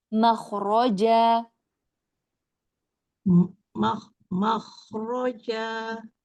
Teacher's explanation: Wa may yattaqillaha yaj'al lahu makhraja. Iya, kemudian kho-nya isti'lanya mau lebih terasa